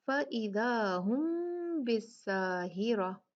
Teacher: میم ساکن ہے، اس کے بعد با ہے، یہ میم کا اخفا ہے، جس کو اخفاء شفوی کہا جاتا ہے کیونکہ میم ہونٹوں کا لفظ ہے، ہونٹوں سے ادا ہوتا ہے، اور عربک میں 2 ہونٹوں کو شفتین یا شفتان کہا جاتا ہے.